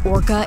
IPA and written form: ˈɔrkə (Orca)